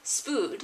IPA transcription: ʃp^hud